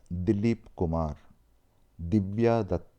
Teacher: notice the tip of your tongue touches the teeth instead of the roof of the mouth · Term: soft consonants